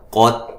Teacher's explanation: قاف کو موٹا، تا کو ہلانا نہیں ہے. تا کی آواز تھ کی آواز بھی نہیں آنی چاہیے.